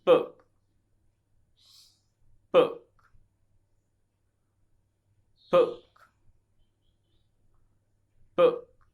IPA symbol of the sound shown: Ʊ